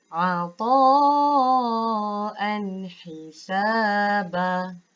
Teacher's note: Tanwin baris atas ataupun fathatain bertemu dengan huruf ha. Tidak boleh dengung. Baca dengan jelas dan terang.